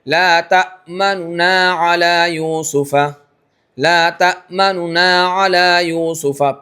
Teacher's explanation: पेश की तरफ इशारा भी मुंह भी गोल हुआ। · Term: रोम